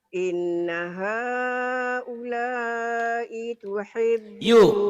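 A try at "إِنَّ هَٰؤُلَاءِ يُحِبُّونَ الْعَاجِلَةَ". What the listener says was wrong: Titiknya di bawah. Yuhibbu.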